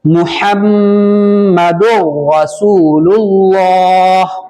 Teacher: محمد میں جو میم ہے, بیچ والی جو میم ہے اس پر تشدید ہے, اس لیے یہاں پر غنہ ہوگا. میم مشدد ہے یعنی میم پر تشدید, تو اس پر غنہ کر کے پڑھنا ہے